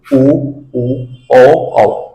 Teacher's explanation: दोस्तों हम बात करते हैं वृत मुखी वृत मुखी में यानी वे स्वर जिनको बोलते समय हमारे होठों की आकृति गोल बनती है